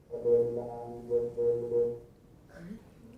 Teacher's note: they don't have good intonation here because I think they used just a steady pitch for f0 so it will sound pretty mechanical when you hear it but